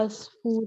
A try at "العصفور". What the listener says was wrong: اسفورو، it's not us, it's او.